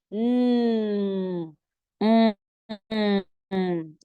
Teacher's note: When you produce this particular sound, air comes out of your nose. It's one of the nasal sounds, and we have 3 basic nasal sounds.